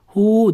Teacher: Hu deb ikki harakat cho'zamiz.